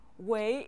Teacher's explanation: left the character way on the right gives us the sound way with the third tone means great